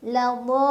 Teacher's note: Kemudian pas mau masuk ke lam pakai nabar, dihentakan ya. Ladallun, tekan ke lamnya.